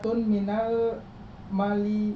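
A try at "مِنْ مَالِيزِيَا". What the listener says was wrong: Nggak ada minau. Min Malaysia. Malaysia. Ada zai di situ ya.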